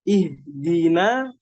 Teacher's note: Disempurnakan juga harokat kasrohnya. Jangan seperti huruf E. Jangan ihdina, ihdina.